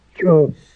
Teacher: it has that little glottal stop right at the end of the CH, but it's one sound